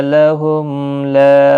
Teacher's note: میم کے بعد لام آئے، اظہار شفوی ہوگا۔